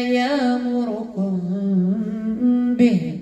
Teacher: عندي الميم مع الباء إخفاء